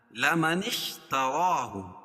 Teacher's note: وصل کی صورت میں یہ الف حذف ہو جائے، گر جائے گی، نون کو شین میں ملیں گے. لمن اشترا کڑا زبر قائم مقام الف مدہ کہ اس کو ایک الف کے برابر کھینچ کے پڑھیں گے.